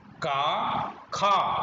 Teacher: अघोष वर्ण जो कि कंठ से उच्चारित होते हैं